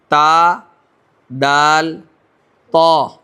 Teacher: پھر اس کے بعد دیکھیں 11واں مخرج, زبان کی نوک ثنایا علیہ کی جڑ سے تا, دال, طا, یہ 3 حرف ادا ہوتے ہیں ایک مخرج سے